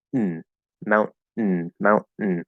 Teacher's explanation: there's no need to open the mouth. You can do a syllabic N consonant